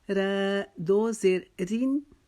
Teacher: اس را کو باریک پڑھیں گے کیونکہ اس کے نیچے دو زیر کی تنوین ہے